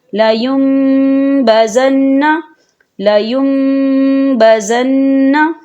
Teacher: نون ساکن کو بالکل نہیں پڑھیں گے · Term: اقلاب